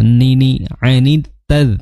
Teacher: Ani ya, an makhrajnya di pertengahan lidah ya. Kemudian ni ya, sama seperti lam, di ujung lidah bertemu dengan gusi gigi seri atas